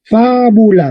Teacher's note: entonces el acento está en la antepenúltima